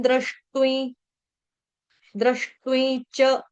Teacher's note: तू के ऊपर जो अनुस्वार उसका उच्चारण न होगा क्योंकि आगे द आ रहा है